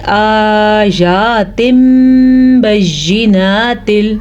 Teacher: تنوین کی آواز یا نون ساکن کی آواز میم میں بدل جائے گی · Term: اقلاب